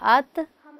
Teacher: تا کو چونکہ بیٹے ہم نرمی سے ادا کرتے ہیں اس میں قلقلہ پیدا نہیں ہوگا، جنبش پیدا نہیں ہوگی